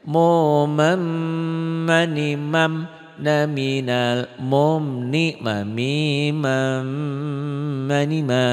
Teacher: nun mati ketemu mim idgham bigunnah. N-nya hilang melebur ke M.